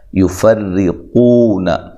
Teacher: یفرقون، را کو باریک پڑھنا ہے، نیچے زیر، را کے نیچے زیر اور را کو باریک پڑھا جاتا ہے۔